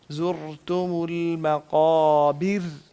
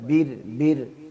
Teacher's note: را جو نیچے والی آخری والی ہے نا اس کو باریک کریں، یعنی زبان کو آپ نارمل کر لیں. پیچھے سے اٹھائی ہوئی ہوتی ہے نا تو پیچھے سے نہیں اٹھانا.